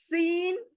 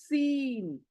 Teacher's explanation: सीन बारीक सुई जैसी आवाज निकलनी चाहिए सीन सामने के ऊपर के नीचे के दोनों दांत मिलने चाहिए